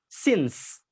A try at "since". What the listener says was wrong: Since. Since. Not sin, but since. So that's how you say since.